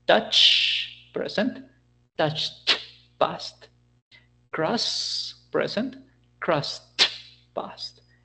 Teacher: we're going to complete a voiceless sound with another voiceless sound